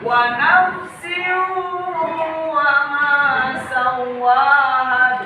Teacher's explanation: Idgham bigun. Cara membaca idgham bigunah yaitu mendengung.